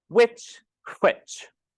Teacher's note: we over pronounce the h at the beginning